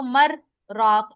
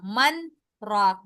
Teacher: نون کو کلیئر کرنا ہے کیونکہ وقف کی صورت میں تو ادغام نہ ہوتا وہاں پر